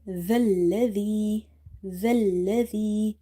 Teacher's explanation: zal is from the tip of the tongue when it touches the inner edges of your top two front teeth, and this zal again we will read by suppressing the sound or by stopping the airflow.